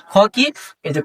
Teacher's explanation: খ হচ্ছে অঘোষ মহাপ্রাণ